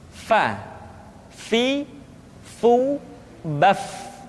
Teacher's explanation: Berikutnya pengucapan huruf Fa. Diucapkan dengan menyentuhkan ujung dua gigi seri kita bagian atas dengan bibir bawah bagian dalam. Fa. Seperti kita mengucapkan huruf F di dalam huruf Latin.